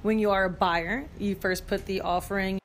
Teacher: notice how she really punches the word buyer because you can be a buyer or a seller